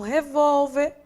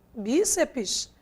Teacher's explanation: a sílaba tônica quem é não é a última e sim a penúltima